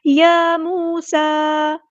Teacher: یا موسیٰ، یا پہ کھڑا زبر ہے، مد اصلی کریں گے، واو مد آ گئی ہے، مد اصلی کریں گے، سین کی سیٹی واضح کریں گے،